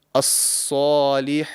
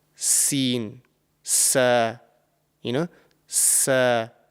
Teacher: the top of the tongue is raised to the roof of the mouth to make it a heavy and thick sounding letter. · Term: Sad